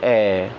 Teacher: केवल ए बोला जाता है, जीभ के बीच वाले हिस्से से, है ना, ए। तो आपका ना अगला हिस्सा काम करेगा इसमें, ना पिछला हिस्सा काम करेगा, आपका इसमें केवल बीच वाला हिस्सा काम करेगा जो कि है ए, यानी कि छोटा आ, ठीक है।